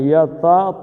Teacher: پہلی تے پتلی پڑھنی ہے اور تا موٹا پڑھنا ہے